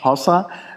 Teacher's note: Da wird also ein Hohlraum gebildet mit der Zunge. Also hinten geht die Zunge hoch, dann entsteht da ein Hohlraum, ein Vakuum wird aufgebaut und dann wird das Vakuum gelöst und dann fließt Luft ein, das gibt diesen Klickgeräusch. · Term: laterale alveolare Schnalzlaut